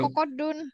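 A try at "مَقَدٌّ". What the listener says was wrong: Bukan kokodun, makodun ya. Isim makan, isim zaman sama isim alat itu mim awalnya. nah, makodun, makodun, miqad, miqadun.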